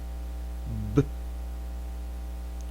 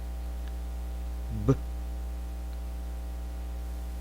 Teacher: the B sound is same as the P sound when it comes to mouth position. However, this time it has to be voiced with vibration. So again, we stop the air in which both lips come tightly together, and then we release it.